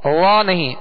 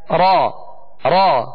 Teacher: اس میں مشابہت تکرار ہے، ہلکی سی کپ کپاہٹ جسے رعشہ کہتے ہیں، ہلکی سی کپ کپاہٹ پیدا ہوگی